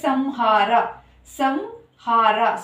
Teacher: ಸೊನ್ನೆ ಮುಂದೆ ಇರುವಂತಹ ಅಕ್ಷರ ಹ ಬಂದು ನಮಗೆ ಅವರ್ಗೀಯ ವ್ಯಂಜನ ಆಗಿರೋದ್ರಿಂದ ಮ ಅಕ್ಷರವನ್ನ ಉಚ್ಚಾರಣೆ ಮಾಡ್ತೀವಿ